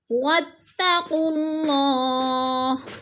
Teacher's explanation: اللہ سے پہلے لفظ قاف کے اوپر پیش ہے تو اللہ کو پر کر کے پڑھیں گے